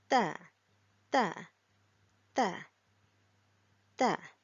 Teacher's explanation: the way we pronounce Ta is by putting our front part of our tongue to the front upper front teeth